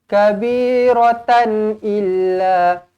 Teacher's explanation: Tanwin selari bertemu hamzah, izhar halqi dibaca dengan jelas dan terang.